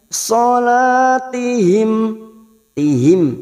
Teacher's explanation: mim sukun bertemu sin namanya idhar safawi dibaca jelas tanpa mendengung